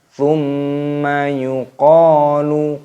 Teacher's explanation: ada hukum mim tasdid, hukumnya dibaca gunnah. Gunnah itu artinya berdengung. Jadi cara membacanya yaitu didengungkan.